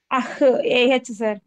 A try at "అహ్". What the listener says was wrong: Super.